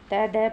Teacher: त एवं द के उच्चारण में जीभ ऊपर के दांत का स्पर्श करने आती है।